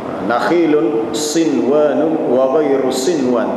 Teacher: Nun mati jumpa dengan waw, dia tak boleh dengung situ sebab melibatkan fi kalimatin wahidah. Dia tidak termasuk hukum idgham ma'al gunnah. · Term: izhar mutlak